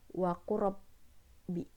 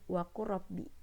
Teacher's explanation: Jadi lam itu nggak kebaca, jadi langsung ke ro-nya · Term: idgham mutaqaribain